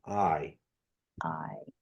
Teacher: it's kind of rising and falling at the same time